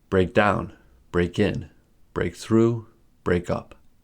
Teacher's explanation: When the particles of the phrasal verbs are adverbs, phrasal verbs have two stresses. The primary stress is on the particle and the secondary stress is on the verb. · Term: double stress pattern